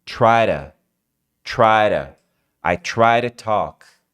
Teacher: O to do meio vira ra.